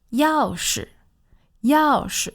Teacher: That's a fourth tone and a neutral tone